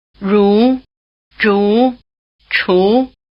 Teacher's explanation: This means that they are pronounced with the tongue curled back in the position for R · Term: retroflex consonants